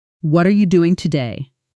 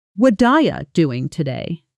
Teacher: Notice how what are you almost collapses into a single soft sound.